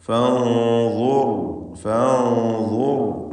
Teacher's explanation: അന്ത്യത്തിൽ ഉള്ള റാ സാക്കിനത്തെ റാ അതിനും തഫ്ഖീമാണ്.